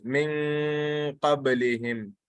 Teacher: the noon is there, but the mouth is already in the position of pronouncing the next letter. So that is ikhfa.